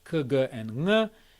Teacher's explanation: Or you can get velars, which are not coronal, like k, g, and ng